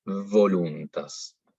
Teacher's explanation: Entonces es importante que sí lo hagamos en este caso, porque no es voluntas, es voluntas. La V tiene que ser con los dientes de arriba sobre el labio de abajo. Y va a tender a sonar casi como una F